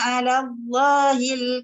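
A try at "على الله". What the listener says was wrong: Kalau boleh kan pada kalimah ala tu nipis, kalimah Allah tu jangan ala Allah, dia jadi sama nipis. Wa yaquluna 'ala Allah. 'Ala Allah, dia kena tebal kalimah Allah.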